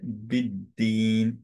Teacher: সো দাল যেহেতু কলকলা letter, এর জন্য কলকলাটা স্ট্রিপ্ট হয়ে যাবে। ঠিক আছে, কলকলা থাকবে না, ড্রপ করবো আমরা কলকলাটা, যেহেতু সাদ্দা আছে